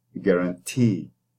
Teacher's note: it is an open syllable because it does not have a consonant. So as a result, the E is extended and it becomes a tense vowel